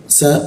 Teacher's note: Sa posisinya di sini dia hembusan udaranya agak kencang ya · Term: huruf sa